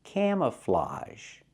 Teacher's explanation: And the last vowel is ah. It's an open sound, like hot and stop.